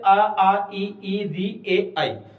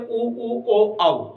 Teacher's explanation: अब देखो इधर आ ई री ए आई, ये हो गए हमारे कौन से अवृत्तमुखी स्वर, जिनके उच्चारण में होठों की स्थिति गोलाकार नहीं होती है वो अवृत्तमुखी, और जिनमें होती है वो वृत्तमुखी